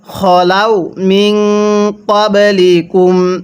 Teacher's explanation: এখানে আমরা নুন সাকিনটা গুনাহ করব, কারণ নুন সাকিনের পরে কফটি হলো ইকফার হরফ।